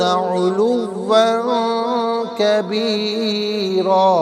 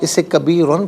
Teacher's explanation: اسے کبیرن پڑھیں گے، وقف کی صورت میں دو زبر کی تنوین الف سے چینج ہو جاتی ہے